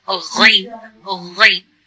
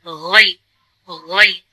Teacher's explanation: बिल्कुल जहां से गला हमारा स्टार्ट होता है वहीं से हमें इसको पढ़ना है